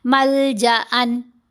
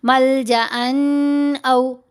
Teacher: اظہار کرتے ہوئے نون کی آواز کو ظاہر کر کے پڑھا جائے گا اور جلدی پڑھا جائے گا